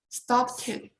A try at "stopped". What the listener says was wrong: What you're doing, you're making it, you're trying to put in that ed ending. Even though you see that ed, the sound is T. So the word's going to be pronounced like stopped.